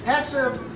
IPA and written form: ˈhæsʌp (HACCP)